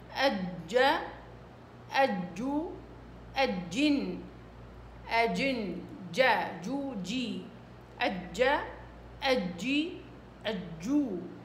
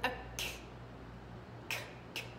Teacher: ما تحاولي أبدا تكتمي صوتها على الآخر ولا تهمسيها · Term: الجيم